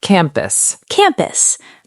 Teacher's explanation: The stress is on the first syllable.